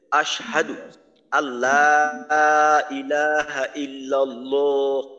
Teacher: আল্লাহ শব্দের লাম মোটা করতে হবে